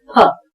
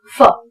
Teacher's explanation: हिंदी वाला जो फ है, एक्चुअली वो फ नहीं है, वो है फ। दोनों होंठ जब मिलते हैं तब ये उच्चारण निकलता है